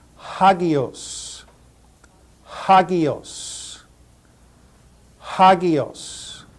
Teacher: the breathing Mark here is a rough breathing Mark so we will put an H sound in front of the pronunciation of this word